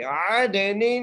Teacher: عین کو دال سے ملائیں گے اور دال پہ قلقلہ کریں گے